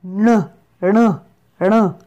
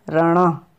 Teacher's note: It is like a noon but with a hook under it. It makes the mixed sound of noon and re.